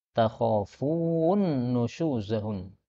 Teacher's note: Ini nun ketemu nun bisa diidghamkan.